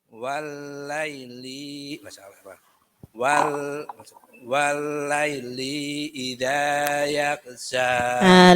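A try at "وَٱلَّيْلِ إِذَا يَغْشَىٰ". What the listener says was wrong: Linya nggak boleh panjang. Walaili idza langsung.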